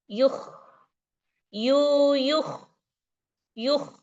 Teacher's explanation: Pangkal lidahnya naik dan jadi tebal. Makanya lidah pangkal lidahnya naik, maka dia bergesekan dengan tenggorokan. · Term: huruf Kho